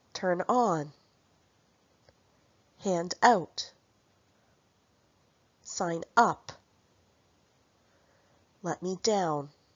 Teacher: In phrasal verbs, we stress the particle.